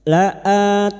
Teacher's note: Laan nun yang bertasdid gunah musyaddadah. Kita dengungkan selama tiga harakat.